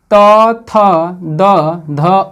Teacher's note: दांत और जिह्वा के सहारे जो वर्ण उच्चारण किए जाते हैं उन्हें दंत वर्ण कहते हैं।